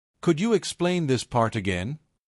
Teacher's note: Slight upward pitch on again.